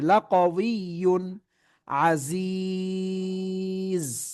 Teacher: গুন্না করা যাবে না, গুন্না ছাড়া স্পষ্ট করে পড়তে হবে। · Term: এজহার